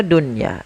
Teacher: Maka apabila ada nun sukun terdal terdapat dalam satu kata, maka ia tidak dibaca dengan bacaan idgham. Akan tapi kita membacanya dengan bacaan izhar mutlak yaitu suara nunnya harus dibaca dengan jelas.